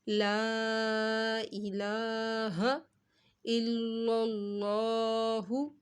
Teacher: لا کو لمبا کیا، اس کے اوپر مد تھا اس وجہ سے